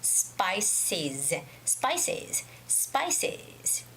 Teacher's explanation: actually the last sound is z the voiced sound of s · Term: the voice sound of S